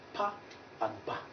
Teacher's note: Bilabials. The two lips come together to produce the sound pa and ba.